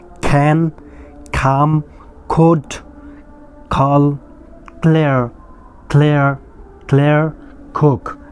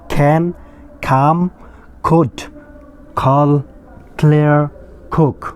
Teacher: ইংরেজিতে ক কোনো উচ্চারণ হয় না, ইটস খ, খ।